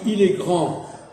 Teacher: Si je dis il est grand, je sais que comme c'est il qui est un homme, je ne prononce pas le D.